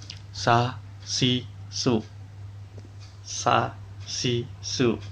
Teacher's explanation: Makhraj huruf sa, ujung lidah menghadap dan mendekat di antara gigi seri atas dan bawah. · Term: huruf sin